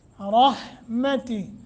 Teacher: ساتھ لمبا کر کے رحمتی را کو موٹا رک جائیں تو جو ہا ہے نیچے کھڑی زیر ہے وہ کھڑی زیر کو ہم ختم کر دیں گے اڑا دیں گے ہا کو ساکن کر دیں گے رحمتی کر کے پڑھیں گے وصل کریں گے یعنی ملا کے